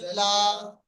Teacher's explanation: তারপরে লামের উপরে হামজা খাড়া খাদের জবর, লামের উপরে খাড়া জবর আছে, খাড়া জবর আলিফ মাদ্দার সমতুল্য, এক আলিফ টান দিয়ে পড়তে হবে